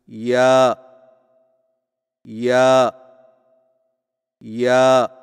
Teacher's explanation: یا کی ادائیگی میں زبان کے درمیان کو تالو کی طرف بلند کرتے ہوئے باریک آواز میں پڑھیں